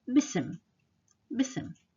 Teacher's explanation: Ism means name. But when you combine it with B, we don't pronounce the alif, so it becomes bism.